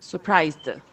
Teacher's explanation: Sometimes D sounds like T, like in this word, surprised.